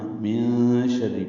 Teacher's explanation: نون ساکن کے بعد شین آنے کی وجہ سے اخفا ہے، نون کی آواز چھپائیں گے